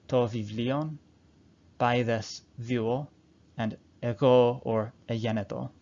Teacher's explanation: the voiced stops that we're used to saying as ba, da, and ga are changed to fricatives as to vivlion, baedes vuo, and ego or egeneto.